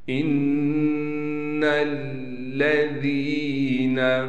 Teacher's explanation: نون پر غنہ کریں گے، نون کو لام سے ملائیں گے، ذال کے بعد یا ہونے کی وجہ سے ذال کو ایک الف کی مقدار کھینچیں گے